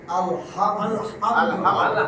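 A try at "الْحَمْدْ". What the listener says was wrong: আলহামদু বলা যাবে না, থামবে আলহাম আলহামদ আলহামদ, একটা বেলছেন বল আলহামদুলিল্লাহ, আলহামদ, এটা সাকিন দিলেন, আলহামদ আলহামদ।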